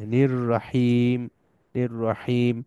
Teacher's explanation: আলিফ লাম সাইলেন্ট তাইলে নির এইখানে নি টা এসে রাকে ধরবে